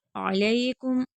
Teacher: अलैकुम, आइन हर्फ हल्की हलक से अदा होगा, या लीन है, लाम को नरमी के साथ पढ़ेंगे